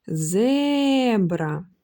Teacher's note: чуємо що довше і сильніше вимовляємо перший склад тому наголос ставиться саме на нього